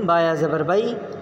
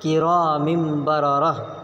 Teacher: تنوین یا نون ساکن کے بعد با آئے تو نون کو میم سے بدل کر پڑھیں گے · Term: اقلاب